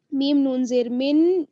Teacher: तो यहाँ पर देखिए मिन नुतफ़तिन, मीम को हम नून के साथ मिलाएंगे, मीम नून ज़ेर मिन और आगे जो नून है उस पर तशदीद है, तो यहाँ पर क्या होगा कि जो नून साकिन है वो पढ़ी नहीं जाएगी बल्कि हम मीम को डायरेक्ट शद वाली नून के साथ मिलाएंगे, मीम नून ज़ेर मिन, और आगे नून को तवा से मिलाएंगे।